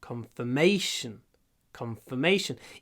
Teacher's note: Здесь ударение уже на третий слог.